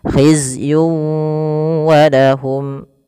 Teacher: Kemudian khizyun wa lahum, khizyun wa lahum, masukkan di sini ada tanwin melafal yun ketemu dengan waw, maka cara membacanya masukkan tanwin kepada huruf waw, tidak lagi khizyun walahum tapi langsung waw, khizyun walahum.